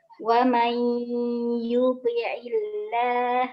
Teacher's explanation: Ya, non dengan ya mai ya iya itu tuh. Ya, menjadi huruf far'iyah karena blenderan antara nun dengan ya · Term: Idgham bi gunnah